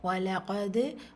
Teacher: கல்கலாவுடைய எழுத்து கல்கலத்துல் சுகுரா சிறிதாக அசைச்சு ஓதணும்